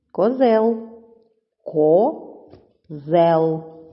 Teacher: Так, це слово ділиться на два склади. Перший ко, другий зел. Наголошений другий склад.